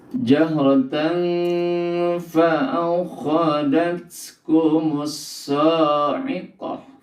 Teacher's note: Jadi apabila tanwin bertemu huruf yang 15 huruf ikfa, maka tanwin dibaca dengan samar-samar antara bunyi eng dan bunyi n ya, antara idgham dan izhar.